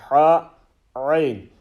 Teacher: ha and ayn pronounced from the middle of the throat. In the middle of the throat, ha, and when you actually say the letter correctly, you will feel there's a twinge in your actual Adam apple.